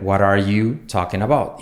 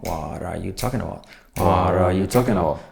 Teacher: Y todo junto, la T como R